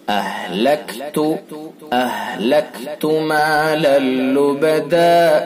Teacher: لام رام سے ادغام تام ہوگا. ادغام تام یہ بلا غنہ